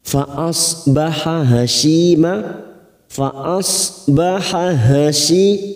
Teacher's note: ada huruf ha yang bersanding dengan huruf ha masing-masing sama makhrajnya ada di tenggorokan